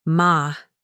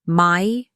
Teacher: When I said my house, notice the diphthong in my. It's not flat, ma. It glides, my.